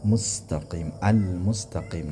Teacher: al-mustaqim panjang 6 harakat